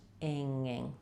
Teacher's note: You're having to do two ing's in a row. And you don't want to have a little G sound in there.